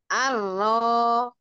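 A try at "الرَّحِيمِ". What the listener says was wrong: Arroh. Lagi Arrohimi. Arroh. Arroh. Jangan pakai bibir bawah. Arroh. Ar, ar. Yuk, roknya bagian ujung lidahnya agak dicekungkan begini. Begini, jangan, jangan begini. Jadi ujungnya tuh begini ya. Jadi ada celah di tengah. Ar, ar. Ro. Rori. Ro. Ro, ro, ro.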